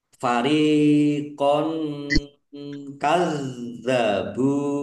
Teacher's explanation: Fariqon kadzabu ro kasrh ya sukun mad thobi'i panjang dua harakat fathah tanwin bertemu dengan huruf kaf bacaan ikhfa dibaca samar-samar